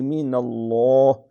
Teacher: یہاں لفظ اللہ کا لام موٹا ہے کیونکہ اس سے پہلے نون ہے، نون کے اوپر زبر ہے، زبر اور پیش ہو تو پھر موٹا۔